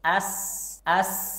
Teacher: Huruf Sin suaranya tipis karena lidah kita rileks